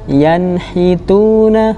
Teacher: menjadi huruf yang jelas izhar tanpa mendengung